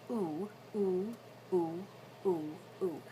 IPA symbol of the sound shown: uʷ